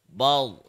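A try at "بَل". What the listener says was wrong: Say bal. Bal. Your lips are not narrowing. Narrow them, round them. Bal. Where are you touching your tongue in letter law? So it is bal. Bal.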